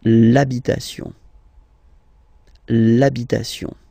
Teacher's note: thing as previously when what we saw for the masculine part, even if you've got this H, then the first sound you hear is A